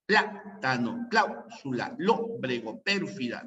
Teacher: llevan la fuerza de voz en la antepenúltima sílaba y siempre se van a tildar. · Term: palabras esdrújulas